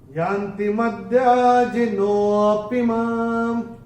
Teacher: इसमें नो को थोड़ा सा खींच के हम बोलते हैं, यान्ति मद्याजिनोऽपि माम्, ये ऐसे करके आएगा। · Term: विलुप्त अ